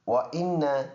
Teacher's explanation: نون کے اوپر شد ہے، جماؤ کے ساتھ پڑھیں گے اور اس میں بقدر ایک الف اس میں غنہ ہوگا۔ ناک میں آواز لے کے جائیں گے اور 1 سیکنڈ ناک میں آواز رو کے رکھیں گے، اس کو پکا غنہ کہتے ہیں